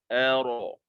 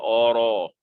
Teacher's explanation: A nipis. Kemudian ra tebal. Ara. Tak boleh baca ora.